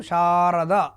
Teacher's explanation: షా దీర్ఘం పలుకుతున్నాం కాబట్టి అది గురువు అవుతుంది. ర ద అవి క్షణకాలంలో పలుకుతున్నాం కాబట్టి లఘువులు అవుతాయి.